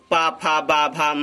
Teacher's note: ये ओष्ठ से उच्चारित करते हैं